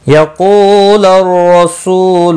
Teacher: قاف مستعلیہ ہے، پر پڑا جائے گا۔ کو واو مدہ ہے، سو واو مدہ ہے، دونوں کو 1 الف کے برابر کھینچ کر پڑھیں گے۔